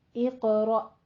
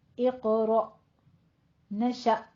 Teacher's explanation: آپ نے تھوڑا سا ایسے جھٹکے کے ساتھ حمزہ کی آواز کو لے کر آنا ہے